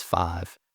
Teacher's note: saying the word, five as five, you might have this monophthongization there